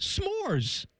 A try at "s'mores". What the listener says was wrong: S'mores. You're putting another syllable